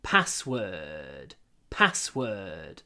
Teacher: so try to pronounce word in I call it kroi voice don't use your full voice when you say word